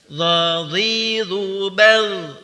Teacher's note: Huruf dha dikeluarkan atau diucapkan dengan menempelkan atau menyentuhkan ujung lidah dengan dinding 2 gigi seri bagian atas tanpa desis.